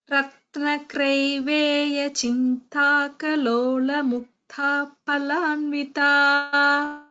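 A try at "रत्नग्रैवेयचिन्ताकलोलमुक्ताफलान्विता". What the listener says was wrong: Uttama Prayatnam. Danyavadaha.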